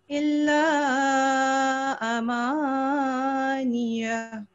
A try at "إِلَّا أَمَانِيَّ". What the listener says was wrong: इसको आप दोबारा इसको पढ़ें, आपने ये मुझे लगता है ज्यादा लंबा कर दिया है अलिफ को, आप दोबारा इसको पढ़ें।